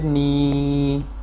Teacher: نون یا زیر نی اس کو لمبا کرنا ہے کیونکہ یا ساکن سے پہلے زیر ہے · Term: حروف مدہ